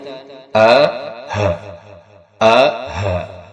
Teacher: Maka hamzah dan ha ini kita bunyikan di pangkal tenggorokan.